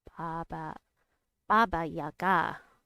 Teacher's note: Baba Yaga has an accent on the last syllable.